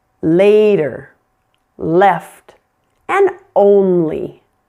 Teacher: We use the light L, which we've just been practicing before vowel sounds.